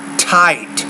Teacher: you got to get that tongue right behind the teeth, tight, and push more air out